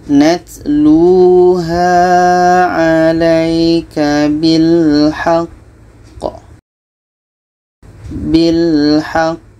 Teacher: Jadi di sini ada qamati diiringi dengan tasydid, letaknya pada akhir bacaan ini qalqalah akbar. Cara bacanya kita berhenti 2 detik, setelah itu kita pantulkan.